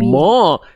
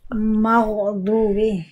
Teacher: Goinnya tetap tebal. Mimnya tipis, goinnya tebal. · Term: Mim tipis